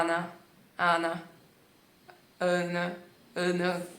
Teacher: a língua fica muito mais pra dentro, relaxada